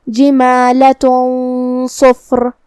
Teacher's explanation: ہم یہ غنہ کو اور حرف الصاد کو دونوں کو بھاری آواز میں ادا کریں گے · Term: اخفاء